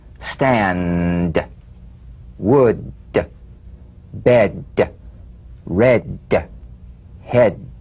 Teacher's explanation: Voiced tongue front, palatal stop consonant. Play this D drum beat on the springing away of the tongue from the upper gum ridge.